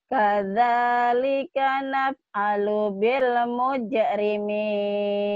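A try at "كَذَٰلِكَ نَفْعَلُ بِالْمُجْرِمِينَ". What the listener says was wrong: Kadzalika naf'alu bil mujrimin. Di sini buat ini agak cepat, agak buru-buru ya, jangan buru-buru.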